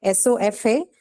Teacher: that light vowel sound is what we call as shva, the inbuilt vowel